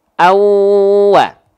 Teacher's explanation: Kalau misalnya teman-teman temukan ada fathah tain berjumpa dengan huruf bau, maka kita nggak baca anwa. Tapi bunyiannya dileburkan ke waw. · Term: idgham